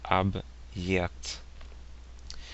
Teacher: when you have a hard sign that comes after a consonant it creates a slight break in the word